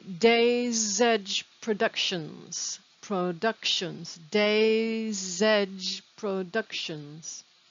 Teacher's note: the s on days connects to the e in edge like it's one word